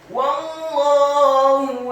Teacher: huruf wawunya dibaca fathah, cukup 1 harokat saja karena setelahnya langsung disambung ke huruf lam yang tasydid dan fathah 2 harokat karena harokatnya tegak pada kata Allah.